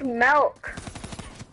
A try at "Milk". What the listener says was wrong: What's with the E in everything you say?